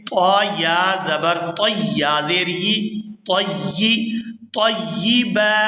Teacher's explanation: یہاں پر طا ہے، طا کو یا مشدد کے ساتھ ملا کر ادا کریں گے